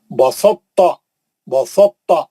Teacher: تا کا اطباق کا مطلب تا کا موٹا پن باقی رکھ کر ادغام کیا جاتا ہے · بسطا تو ہی نہیں پڑھیں گے، سیدھا تا میں چلے جائیں گے. تو تا کو تھوڑا موٹا پڑھو ورا کیونکہ تو ہی اس کے اندر گھس گیا ہے، تو اس کو موٹا کر دیا انہیں. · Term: ادغام متجانسین ناقص